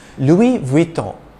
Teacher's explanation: you don't pronounce the n at the end as a distinct letter instead you pronounce the preceding o with a nasal sound